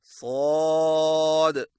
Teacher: सौद की अदायगी में जुबान की नोक को सामने वाले नीचे के 2 दांतों के किनारों से मजबूती से लगाएं और जुबान की जड़ को तालू की तरफ बुलंद करें